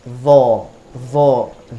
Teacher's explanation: Ketika kita tutup, kita angkat pangkal lidah, maka dia akan berbunyi tebal.